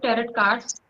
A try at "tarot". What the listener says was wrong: Tarot. Tarot. T is silent. T is silent, so you say tarot. don't pronounce T, last T don't pronounce. Tarot.